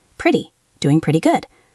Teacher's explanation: In American English, the t sounds like a soft d.